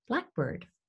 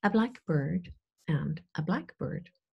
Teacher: We start with higher intonation, we have one main stress, and then it goes a little bit downhill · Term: compound noun